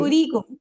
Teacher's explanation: उरीकुम में देखे मैं वाव नहीं पढ़ रही क्योंकि उस पर राउंड जीरो है